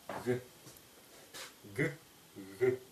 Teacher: Передняя щелевая «г» произносится как и буква «г», но без взрывного компонента. То есть не касаются язык и небо, а лишь приближаются не «г», а «г».